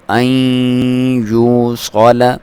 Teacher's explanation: ملائیں گے تو غنہ بھی کریں گے، تو این یو صال، ناک میں سے آواز نکالیں گے، غنہ کریں گے، اور اس کی لمبائی 1 الف کے برابر ہے